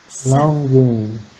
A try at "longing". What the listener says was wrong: No, I don't want to hear G. Longing.